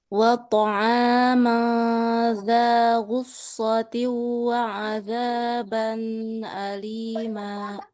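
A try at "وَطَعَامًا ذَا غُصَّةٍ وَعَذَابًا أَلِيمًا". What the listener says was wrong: Ban jangan didengungkan dia. Ban alima das aja.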